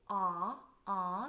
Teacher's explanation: So you'll use the Y sound to transfer into the ah vowel. It's a nice forward ah, not a swallowed aw sound